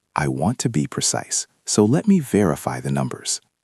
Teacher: There is a small pause after precise.